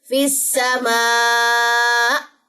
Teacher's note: حمزہ کے نیچے جو زیر ہے یہ ڈراپ ہو جائے گی، حمزہ کے اوپر جزم آ جائے گی اور حمزہ جزم کے اوپر ایک جھٹکا سا آتا ہے